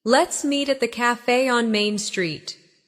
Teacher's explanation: Stress the location so it's clear where to go.